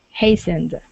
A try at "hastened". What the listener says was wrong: Yeah, without the T. Hastened.